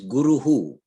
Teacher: Guru plus Sakara is when Gurus. The Sakara at the end, followed by nothing, becomes a Visarga, that becomes Guruhu.